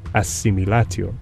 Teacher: word similo results in the pronunciation as similo in other words D comes to share all the features of the nearby s and is completely assimilated to S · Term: assimilation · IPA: /s/